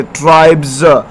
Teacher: لاسٹ میں ایس ہے اور اس سے پہلے بی ای آیا ہے تو اس وجہ سے اس کا آواز زا ہوگا